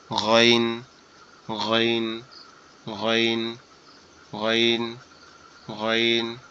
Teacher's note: গয়ন অক্ষরটা আমাদের কণ্ঠনালীর শেষ ভাগ হইতে উচ্চারিত হবে। গয়ন অক্ষরটা আমাদের কণ্ঠনালীর শেষ ভাগ হইতে উচ্চারিত হবে, মনে হবে যে আওয়াজটা গালের মধ্যে থেকে আসতেছে।